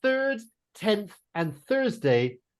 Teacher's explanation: the th is a soft sound it's just air coming through my teeth